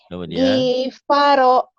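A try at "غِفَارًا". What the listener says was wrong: Ginya pendek atuh.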